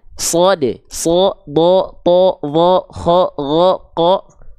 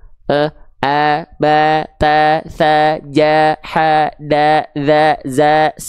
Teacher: Huruf tebal itu ketika dia berharokat fathah, dia akan terdengar seperti vokal O